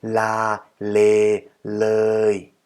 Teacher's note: the l, which is built using our tongue and our teeth